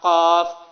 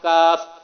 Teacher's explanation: زبان کی جڑ جب لہات یعنی کوے سے ٹکر کھاتی ہے تو اس سے قاف نقطوں والا قاف ادا ہوتا ہے، اور زبان کی جڑ جب اوپر کے تالو سے ٹکر کھاتی ہے تو اس سے کاف ادا ہوتا ہے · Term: حروف لہاتیہ